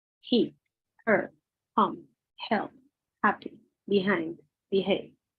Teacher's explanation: H is much softer, more of a whisper.